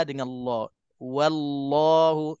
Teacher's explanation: Okey, wallahu sama juga huruf wa macam huruf hamzah. Huruf wa tu huruf yang tipis. Jangan kita tebalkan. Wallahu, kadang-kadang bunyi wal dengan la.